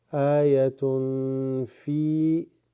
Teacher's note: Now this tun is tanween before the fa, so becomes إخفاء.